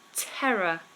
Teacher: notice how in Terror there are actually three Rs but I don't Trill or tap any of them Terror it's very flat